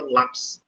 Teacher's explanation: eu falei o lá como intensidade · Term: paroxítona